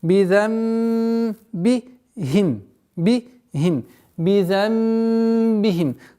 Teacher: Назализация в размере двух огласовок удержания. · Бидамбихим. Со смыканием губ, без давления. Бидамбихим фасух.